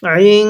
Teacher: হ্যাঁ, ইং, এই যে একটা নুন সাকিন দেখতেছেন, এই নুন সাকিনের পরে দালটা ইকফার হরফ, এই জন্য এই নুন সাকিনটাকে গুন্নাহ করে পড়ছি।